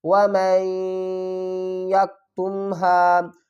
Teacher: میم اور نون اور یا تینوں کو ملا کر پڑھیں گے۔ میم نون یا زبر میں، غنہ بھی کریں گے، و میں، یا کو کاف سے، یا کاف زبر یک، و میں یک، تا کو میم سے، ہا الف زبر ہا، و میں یک تم ہا۔ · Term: ادغام